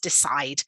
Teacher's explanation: verb, 2 syllables, stress on the second, decide. And then if we're going to turn that into a noun, 3 syllables, where's the stress?